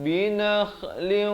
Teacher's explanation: kha di hujung kerongkong